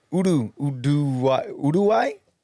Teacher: You're not saying a D. You're just rolling the R.